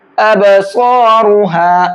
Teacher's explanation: ابصارها خاشعہ، ابصارها، با کے اندر قلقلہ کریں گے کیونکہ با حروف قلقلہ میں سے ہے، اور حروف قلقلہ کے اندر قلقلہ کرنے کی شرط یہ ہے کہ اس کے اوپر جزم ہونا چاہیے. تو یہاں با کے اوپر جزم ہے تو با کو ہلکا سا ڈبل کر کے پڑھیں گے. ابصارها، صاد کو پر کر کے پڑھیں گے.